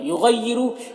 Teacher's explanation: غین حروف مستعلیہ میں سے پر پڑھیں گے. را کے اوپر پیش را کو پر پڑھیں گے.